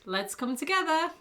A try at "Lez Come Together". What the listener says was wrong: But I think we have to pronounce, because you've told me hundreds of times, Lez-Come-Together. It's not let's, it's Lez-Come-Together.